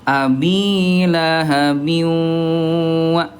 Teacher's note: Ditahan 2 ketukan lambat dan didengungkan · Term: idgham bi gunnah